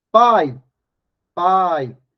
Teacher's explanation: ditongo pode ser aberto ou fechado Observe que a primeira sílaba pai o som é aberto ou oral como é que eu sei disso porque o som sai pela boca é só fechar o nariz pai pai o som sai integralmente